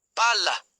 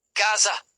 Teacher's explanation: They are held longer and pronounced more forcefully than single consonants. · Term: double consonants